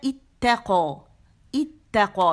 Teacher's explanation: بہت زیادہ جماؤ نہیں دینے کہ 3 تا بن جائیں، 2 ہے نا